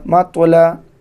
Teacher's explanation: میم تو زبر مط، لام زبر لا، مطلا، تو کے اوپر جزم ہو تو یہاں پر قلقلہ کے ساتھ پڑھتے ہیں